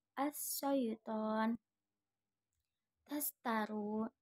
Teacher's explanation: Menurut istilah adalah pengucapannya huruf disertai menyebarnya angin di dalam mulut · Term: at-tafasi